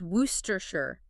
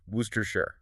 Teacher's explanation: W O R C E S T E R. And yet it collapses into just three short, heavily reduced syllables